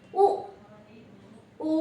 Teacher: ఉ ఊ అంటే రెండు పెదాలు కలిపితేనే ఈ అక్షరం అనేది పలకబడుతుంది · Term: ఓష్యాలు